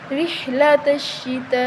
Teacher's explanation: بڑی مد ہے تو ہم اس کو 5 الف کے برابر لمبا کریں گے